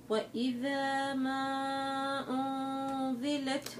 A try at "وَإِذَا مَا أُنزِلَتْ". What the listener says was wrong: أنزلت عندك الزا مع إنه اسمك زا بالزا اسمك زا هذه بتضيع معك ليش مش عارفة.